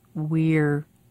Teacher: do you hear how r becomes just one more sound attached to we